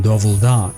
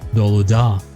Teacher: Uzbek preserves the labial consonant [v], while its dropped in Turkish